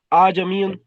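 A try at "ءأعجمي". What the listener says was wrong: नहीं, आज अमीन दूसरे हमजे को पढ़ना है, लेकिन नरमी से पढ़ना है दूसरे हमजे को। आजमीयन आजमीयन आजमीयन। जी हाँ, दूसरे हमजे को तस्हील से पढ़ना है, यानी नरमी से पढ़ना है, यानी यानी क्या कहेंगे, आराम से पढ़ना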